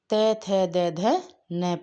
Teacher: जिनका उच्चारण ऊपर के दांतों पर जीभ लगाने से होता है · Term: दंतीय वर्ण